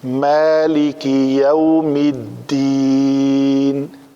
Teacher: مالکی مالک نہیں ہوگا، میم پتلے حروف میں سے ہے، اس کے بعد الف آیا تو یہ پتلا ہوگا